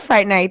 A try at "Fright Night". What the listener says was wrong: Are you saying- are you saying it sounds like you're saying Fight Night.